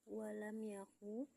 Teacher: hukum tajwidnya adalah ijhar syafawi karena mim sukun bertemu huruf ya dibaca jelas